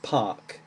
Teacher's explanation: And that's the same in the word park, P-A-R-K. You don't really pronounce the R, it's just park. It changes the vowel sound.